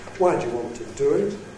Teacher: Because do is stressed, we rise on the do. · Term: fall rising movement